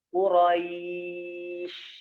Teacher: sya-nya naik, tengah lidahnya ke atas.